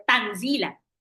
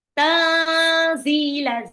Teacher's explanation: nun sukun ketemu zai itu adalah ikhfa, jadi nunnya harus samar, gak boleh tanzila, tapi ditahan.